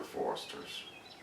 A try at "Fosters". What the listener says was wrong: No, Foster. You're saying Forester. Fosters.